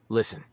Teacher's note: Na sua pronúncia, a letra T não é falada, ficando apenas com o som de listen. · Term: silent letters